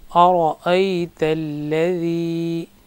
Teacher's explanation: لذی کو تھوڑا سا کھینچیں گے کیونکہ یا ساکن ہے، اس سے پہلے زیر ہے